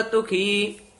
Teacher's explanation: ਤੁਖੀ ਪਦ ਵੀ ਪੋਲਾ ਹੀ ਉਚਾਰਨ ਕਰਨਾ ਧੁਖੀ ਨਹੀਂ ਕਹਿਣਾ